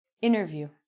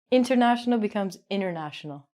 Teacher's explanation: if your t comes after an n it's going to be silent